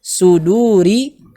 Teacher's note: huruf di situ pakai huruf sad, bukan huruf sin. Jadi harus dibaca tebal.